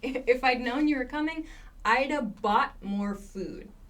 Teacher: I would have reduces to Ida